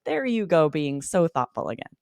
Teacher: we kind of slow it down we sort of emphasize each word